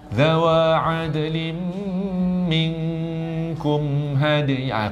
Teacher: Kum ni pendek, tak dengung kan?